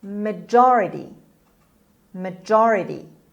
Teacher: the word has four syllables and the stress is on j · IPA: /məˈdʒɑːrəti/